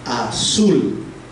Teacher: En la palabra azul, dijimos, había un error en la palabra en la página anterior. La A es la que suena con menor intensidad, azul, y sul suena más fuerte. Entonces, en esa palabra, la A es una sílaba átona y sul es la sílaba tónica.